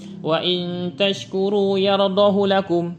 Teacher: Jadi yardahu lakum bukan yardahu. Jadi dibaca pendek huruf hadomirnya.